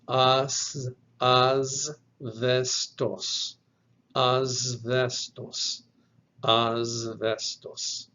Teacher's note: And at the very end of the word, you have a terminal sigma, which is going to be pronounced like any other sigma, which would be voiceless. But the first sigma in this word is going to take on the sound of Z.